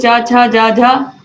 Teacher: तालु में चा वर्ग आता है